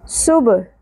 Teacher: سین سیٹی کے ساتھ اور با ساکن پہ قلقلہ